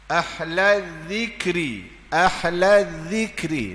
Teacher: Makhraj zal mana? Depan gigi, gusi.